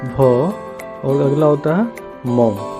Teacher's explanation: बिना आप ओठ के प्रयोग किए हुए इनका उच्चारण आप नहीं कर सकते हैं। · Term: ओष्ठ